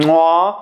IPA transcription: kǀoa